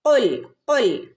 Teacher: ഖുൽ, ഖുൽ ഖാഫാണ്, കുൽ എന്ന് ഓതരുത് കേട്ടോ. ഖുൽ, ഖുൽ നാവിൻ്റെ മുരട് വശം, അവിടെ നിന്നാണ് ഖാഫ് വരുന്നത്